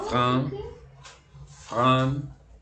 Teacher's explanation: Bien, la A y la N se nasalizan.